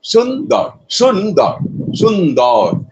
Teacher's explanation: যেমন এখানে সুন্দর শব্দটা নিয়ে আমরা শুদ্ধ বলতে পারি, এখানে আছে শুন দল, এই তো দুটো আছে, দুটো দল আছে, একটা শুন একটা দল। শুনটা কিন্তু 1 মাত্রা, কারণ শব্দের শুরুতে আছে, আর দলটা কিন্তু 2 মাত্রা, শব্দের শেষে আছে। এই জন্য সুন্দরটা অ্যাকচুয়ালি 3 মাত্রা, প্রকৃতপক্ষে 3 মাত্রা। · সুনটা একমাত্রার উচ্চারণ হবে কিন্তু দরটা দুমাত্রার উচ্চারণ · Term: মিশ্রবৃত্ত